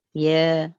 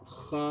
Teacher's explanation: Jadi masa baca ada rasa lidah merendah, bila sebut kha ada rasa lidah meninggi.